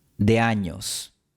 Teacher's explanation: la E es breve y forma diptongo con A. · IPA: ['ðe̯a.ɲos]